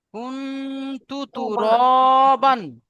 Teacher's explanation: নাকে তুলে এক আলিফ করে গুন্না করে পড়তে হবে